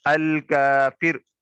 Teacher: را پر اگر میں وقف کرتا ہوں تو جو را ہے وقف کی صورت میں اس کو ساکن کر دیں گے، الکافر کر کے پڑھیں گے، جیسے ہم پڑھتے ہیں نا الحمد للہ رب العالمین۔